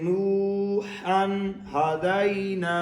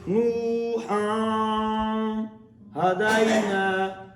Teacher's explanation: ناک میں آواز نہیں جا سکتے کیونکہ ہم نے اظہار کرنا ہے